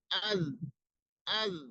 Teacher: যেমন আমরা এখন জালকে যদি সাকিন করি, যেমন আজ, আজ, তখন আপনার স্পষ্ট ভাবে বুঝতে পারছেন যে হ্যাঁ, জিহ্বাটা আপনার ওই উপরে যে দাঁত আছে সেখানে লেগে যাচ্ছে